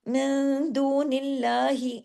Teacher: लेकिन क्यों नहीं हो रहा, क्योंकि नून के नीचे जेर है, अल्लाह का नाम आने से पहले जेर है, इधर अल्लाह के नाम को हैवी नहीं करना